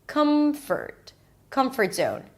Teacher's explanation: the first word is more stressed like high school or team leader or comfort zone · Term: set phrase